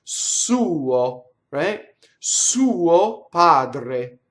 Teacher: The U is longer than the O